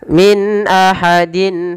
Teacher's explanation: kedua-dua bacaan ini harus dijelaskan antara nunnya dan tanwinnya dan kita hukumi dengan bacaan izhar yang artinya jelas ya ketika membaca Min tidak boleh ditahan Min ahadin engak tapi